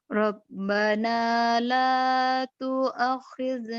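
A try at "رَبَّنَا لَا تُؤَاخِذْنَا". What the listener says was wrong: Tu'a. Tu'a. Panjang.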